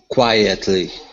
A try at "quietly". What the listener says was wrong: Good, good. Nice job.